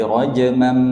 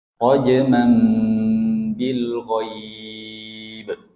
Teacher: asalnya rajman. bertemu ba menjadi rajmam. Dengung juga di situ